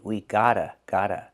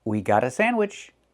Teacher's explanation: We hear the pronunciation of T change to a fast D.